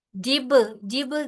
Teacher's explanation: बा पे कलकला होगा